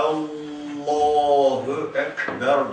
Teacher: L kalın okunuyor değil mi